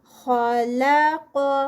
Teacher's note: خا ہیوی، لام لائٹ اور قاف پھر ہیوی